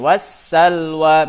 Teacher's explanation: Jadi nggak tersisa lagi silam baik sifatnya maupun makhrajnya karena sudah masuk ke idgham ke huruf sinnya. Wassalwa tuh silamnya ada secara tulisan tapi nggak ada secara bacaan. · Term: idgham kamil